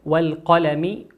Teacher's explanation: لام ساكنة أتى بعد حرف القاف والقاف من حروف اللام القمرية نظهرها كما هي